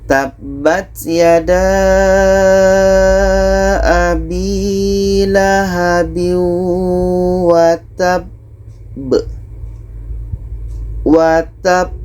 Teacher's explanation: Ini qalqalah akbar. Cara bacanya kita berhenti sejenak atau 2 detik, setelah itu kita pantulkan.